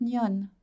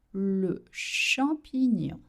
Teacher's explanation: You don't voice the last N.